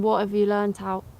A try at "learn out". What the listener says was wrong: Oh, no, you learn out. You made too much of the learn. You learn out.